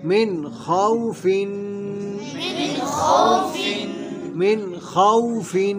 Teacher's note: یعنی میم نون زیر من خا وا زبر خو من خو فا دو زیر فن من خوف من خوف، ہاں یہ بعض غلطی کرتے ہیں، خاؤ، یہ خاؤ نہیں ہے، یہ خو، من خوف، یہاں پہ نون ساکن ہے، نون ساکن کے بعد حروف ہلکی میں سے خا آ رہا ہے تو یہاں پہ اظہار ہوگا، یعنی غنہ نہیں کریں گے